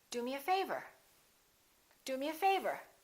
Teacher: the favour gets more stress because it comes at the end